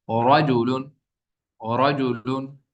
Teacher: را پر زبر یا پیش ہو تو را کو پر پڑھیں گے